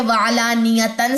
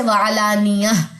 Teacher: وقف کی صورت میں تائے مربوطہ ہا ساکنہ کے طور پر پڑھی جاتی ہے، یعنی کہ وعلانیتن سے وعلانیہ، دونوں نقطے بھی ڈراپ ہوں گے، دونوں زبریں بھی ڈراپ ہوں گی.